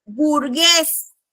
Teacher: La entonación está en la E y termina en S.